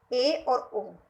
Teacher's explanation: उसके बाद याद रखना है अर्ध संवृत। तो अर्ध संवृत में आधा मुंह खुलता है, आधा मुंह खुलता है, यानी मुंह तो खुलता है, पूरा नहीं खुलता, आधा खुलता है, कम से थोड़ा ज्यादा।